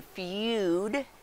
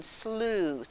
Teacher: we have the u sound like in feud and the ooh sound like in sleuth where my mouth is round